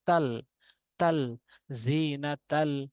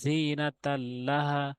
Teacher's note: তানবিনের পর লাম আসছে তাহলে অবশ্যই এটাই হবে বেলাগুন্নার হরফ বেলাগুন্না নিয়মটি প্রয়োগ হয়েছে এখানে তা তে কোন গুন্না করা যাবে না